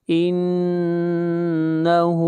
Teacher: نون کے اوپر شد ہے، غنہ کریں گے اور ہا کو کھینچ کر پڑھیں گے ایک الف کے برابر